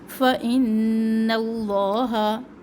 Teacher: نون مشدد پر غنہ کرے